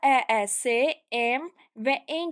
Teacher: İki dənə E yanaşı gəlib. Biri düşüb və digəri uzanıb. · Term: uzun tələffüs